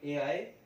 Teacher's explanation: ए और आए, कंठ तालु से उच्चारण होते हैं ए आए